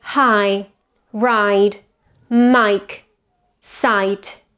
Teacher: Diphthong I starts with an A position and goes towards an I